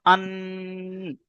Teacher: নুনটা টেনে নয়, নাকের ভিতরে আওয়াজটা তুলতে হবে, ধরে রাখতে হবে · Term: গুন্না, গুণনা